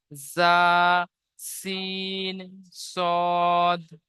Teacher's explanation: জিভের আগা এবং সামনের উপরের এবং নিচের দুই দাঁতের আগার সাথে লাগিয়ে উচ্চারিত হয়। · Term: 13 নম্বর মাখরাজ